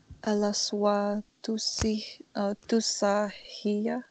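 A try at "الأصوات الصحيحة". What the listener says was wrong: Good.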